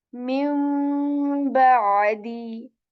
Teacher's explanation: The noon second will change into the meme sound, but also, you can hear that I'm staying here for a bit and making a nasal sound as well. I'm saying min ba'di.